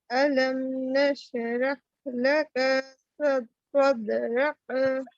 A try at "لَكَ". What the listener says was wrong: لکا کھینچیں گے نہیں بہن. لکا جلدی پڑھیں گے. لکا کہہ رہے ہیں آپ.